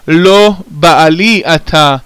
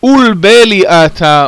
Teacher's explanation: The Babylonians simply could not pronounce the guttural letters, so instead of having an ayin, as in the Hebrew word Baal, they had the long A vowel.